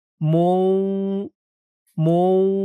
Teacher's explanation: মিম দিয়ে এই তাসদীদ ওয়ালা ওয়াও ধরবে ঈদগামে বাগুন্নাহ গুন্না হবে